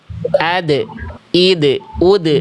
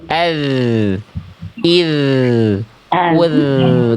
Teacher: Makanya jangan dipantulkan. Suara huruf dal itu suaranya bukan dipantulkan, tapi rakhwah, dialirkan mengalir suara.